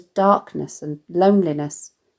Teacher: as “now” and “now”, syllabic rhyme, such as “DARKness” and “LONEliness”, where the last syllable of each word sounds the same but does not contain stressed vowels